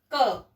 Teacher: जैसे अभी मैं प्रयोग करूं, बोलूं क, तो आपने देखा क अ का साउंड आ रहा है, स्वर आ रहा है पीछे